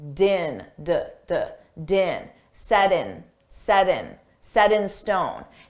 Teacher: Notice we have a T between 2 vowels. So we can pronounce that T as a soft D,